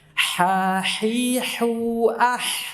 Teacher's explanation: ha tanpa tekanan di tenggorokan tengah. Yang keluar udara dulu baru suara.